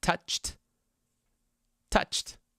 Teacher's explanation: It's touch, ch. The sound ch. The sound ch is, that's right, an unvoiced sound. So our ending is going to be t.